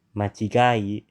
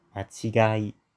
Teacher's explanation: machigai is pronounced low, low, high, high, low